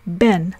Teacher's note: If you say the word ben, you'll notice that your lips are being pressed together to pronounce the b sound of ben